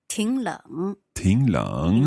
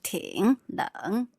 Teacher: So I suppose we make that like the 你好, 挺冷. So the first third tone changes to a second tone.